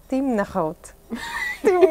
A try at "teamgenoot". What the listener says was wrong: Team was good. Teamgenoot. Teamgenoot. You turned it around the first time. You were like, no god.